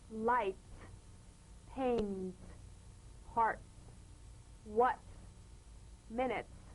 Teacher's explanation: Feel a crisp, percussive hiss between the tip of the tongue and the teeth. When the comes at the end of a word after another consonant, be sure that you feel the preceding K, P, S, F, and N.